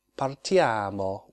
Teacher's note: the stress, which is a lengthened syllable, is on the penultimate syllable